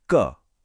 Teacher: कोई खास वाइब्रेशन नहीं हुई। यह अघोष है।